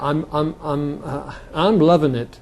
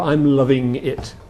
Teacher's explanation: when you're being colloquial, you say in, and when you're being formal, you say ing. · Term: ing variable